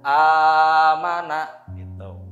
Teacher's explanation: Harus idhar, ya, nun sukunnya.